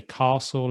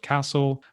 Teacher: the long vowel sound in british english is more common typically in the south of england